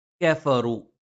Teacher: ഫ മേലെ മുൻപല്ലിന്റെ താഴ്ഭാഗം താഴെ ചുണ്ടിന്റെ പള്ളയിലാണ്